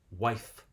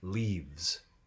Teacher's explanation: because it's between a vowel and a voiced consonant, the F becomes V. We voice it.